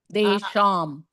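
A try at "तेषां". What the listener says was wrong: Tesham, not Desham.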